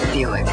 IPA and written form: ˈbjuːɪk (Buick)